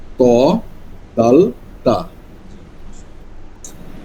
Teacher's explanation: 11 নম্বর মাখরাজ, জিহ্বার আগা সামনের উপরের দুই দাঁতের গোড়ার সঙ্গে লাগিয়ে